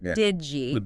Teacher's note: When you say did you, the D and the Y mash together, it usually becomes this J sound